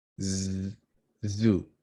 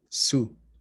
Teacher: We have our word with voiced z and the one without voice s.